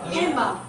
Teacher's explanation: most American English speakers do not pronounce the D in handbag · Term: deletion